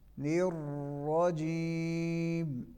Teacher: را پہ بھی ذرا رک کے پڑھیں گے چونکہ یہاں پہ تکرار ہے